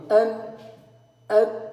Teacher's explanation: ça va sortir par la cavité nasale par le nez en fait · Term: nazilement